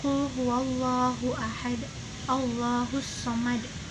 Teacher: qolqolah kubro itu pantulan yang lebih berat dan ada di akhir kalimat